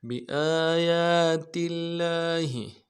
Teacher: تشدید ہے، زور دیں گے، تل تل بی آیات اللہ لاہ، لفظ اللہ کے لام کے اوپر کھڑا زبر ہے، ایک الف دال میں کھینچیں گے ، ہا کو نرم سے ادا کریں گے، بی آیات اللہ